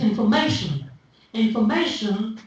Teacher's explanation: Information is stressed on may in all varieties of English except the Indian varieties. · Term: word stress